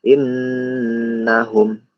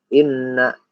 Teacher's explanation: nun bertasydid ini harus dibaca agak ditekan, agak ditekannya agak panjang juga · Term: gunnah